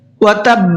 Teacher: وتب، یہاں بھی با کے اوپر تشدید ہے، وقف تو کریں گے ہی کریں گے، وقف کے ساتھ ساتھ یہاں پر با کو ڈبل بھی پڑھنا ہے